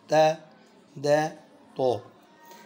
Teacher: تا دال تو کا ایک ہی مخرج، زبان کی نوک یعنی زبان کا سرا اوپر والے دانتوں کی جڑ پہ لگتا ہے